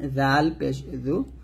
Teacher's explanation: দেখুন এখানে জাল পেশ জু, যখন আপনি জালটা উচ্চারণ করবেন জিহ্বাটা দাঁতের আগার সাথে লাগাবেন, পাতলা করে বলবেন